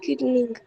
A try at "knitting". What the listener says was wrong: Knitting, beta. It's called knitting. K is silent. It's called knitting, beta. The K is silent.